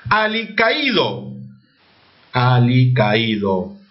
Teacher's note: La tilde está en la I, por lo tanto la A con la I se separa. Ahí ocurre el famoso hiato acentual.